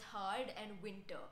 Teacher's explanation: Rhotic speakers pronounce the R sound, such as in the words hard and winter, while non-rhotic speakers do not.